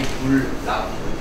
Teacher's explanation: 니은과 리을이 만나서 유음화가 된 현상이지.